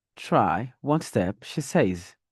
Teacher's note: when I was at the comma, I used the rising tone, more or less like I'm dragging the last word to show that I have more to say. I have more to say.